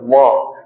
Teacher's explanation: और एक है दंतोष्ठ जो दांत से और उष्ट ओष्ठ से निकलता है वो है दंतोष्ठ वो है व जैसे ही आप व बोलिएगा निचला वाला होठ जो होगा आपके दांत में आके टच करेगा तो व जैसे ही बोलेंगे हो जाएगा तो दंतोष्ठ हो जाएगा व का।